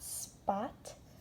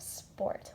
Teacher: Short O sounds like ah, but if you were to put an R after the letter O in a word, you would get or. So if I had spot, I would then have sport with an R behind that O.